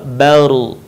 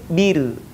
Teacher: sebelum huruf ra yang mati berharokat fathah dhammah, maka suaranya terdengar menebal, baru. Tapi kalau sebelumnya kasrah, maka terdengar tipis, bir.